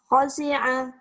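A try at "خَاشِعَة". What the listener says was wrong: Salah. Shinnya ada anginnya. Khosyi'ah.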